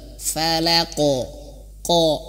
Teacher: nah ini yang kita temui ini qof itu dia memiliki sifat tebal maka pantulannya ke tebal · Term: Qalqalah